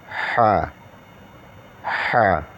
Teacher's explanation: اس کو گلے کے بیچ سے ادا کریں گے، وسط حلق سے